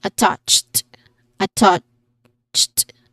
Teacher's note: It is stressed on the second syllable with a short a sound and uh a ch sound or ch sound like in church at the end.